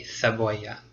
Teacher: if you want to sound a little more European, then you would make a TH sound, so it would be cebolla.